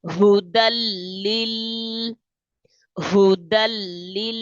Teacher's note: دال کو ڈائریکٹ لام کے ساتھ پلس کریں گے اور لام کو جما کے پڑھیں گے کیونکہ لام کے اوپر تشدید ہے.